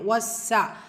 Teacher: அலிஃப் சகீரா 2 ஹரக்கத்தில் நீட்டம் கொடுக்கணும்